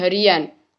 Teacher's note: dalam proses pengimbuhan sufiks an pada dasar hari akan muncul bunyi y, yang dalam ortografi tidak dituliskan tetapi dalam ucapan dituliskan.